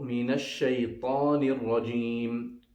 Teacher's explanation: the ta and the ta both are pronounced by putting the tip of the tongue at the root of the two top front teeth